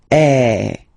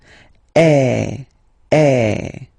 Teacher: the sound that you will have to produce is e. So it's really open. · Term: axon gra